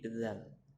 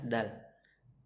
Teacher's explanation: dal yang bertitik ilat itu harus menyentuh gigi atas